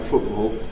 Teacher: If you come to non-intervocalic environments where the following sound is a consonant, there, if the following sound is an obstruent, a strong consonant, I think you'll find this in RP without any doubt. So in words like football, that glottal stop for T is well established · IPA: [ˈfʊʔbɔːl]